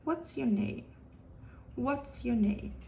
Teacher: the falling intonation pattern and this is commonly used in wh questions